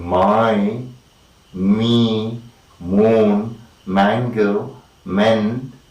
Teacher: both the lower and the upper lip come to a contact with each other there is a closure between the lips and the air is let to go through the nasal cavity · Alright, all the initial sound is the nasal So when we say the sound both the lower and the upper lip come to a contact with each other · the closing of the oral cavity is between the active articulator lower lip and the passive articulator upper lip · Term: bilabial nasal